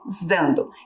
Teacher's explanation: tem um s ali com som de z